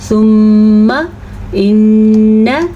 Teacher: میم کے اوپر شد ہے، پھر نون کے اوپر شد ہے، تو دونوں کے اوپر غنہ ہوگا